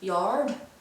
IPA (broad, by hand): jɑːd